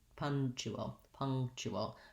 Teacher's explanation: have my stress marker my vowel schwa sounds like a pong the letter n is actually the ng sounds in this word